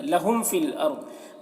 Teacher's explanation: میم ساکن کے بعد فا ہے، میم میں اظہار شفوی ہوگا